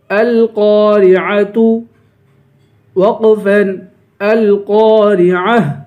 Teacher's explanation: را کو باریک کریں گے، عین کی آواز نکالیں گے، القارعۃ، اگر یہاں وقف کریں گے تو گولتا کو ہا پڑھیں گے